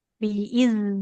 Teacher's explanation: makhrajnya sudah tepat tapi enggak boleh mengalirkan nafas